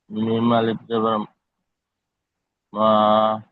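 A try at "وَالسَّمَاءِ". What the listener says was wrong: মিম আলিফ মাদ জাবার। মিম আলিফ মাদ জাবার মা। ওপরে মাদ আছে।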